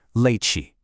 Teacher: Step three, trap the air and forcefully push out the ch. And step four, finish with a whispered tiny ah.